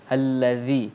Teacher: pastikan zal kita ni berbunyi nipis, jangan bunyi z